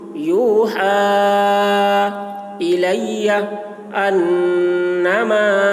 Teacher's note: نون مشدد نون میں غنہ ہوگا